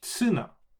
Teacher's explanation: when you take the T line and you don't have the luxury of saying tu, it becomes tsu